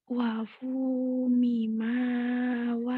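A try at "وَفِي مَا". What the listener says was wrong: bukan mim ya. Ha, wafu miha.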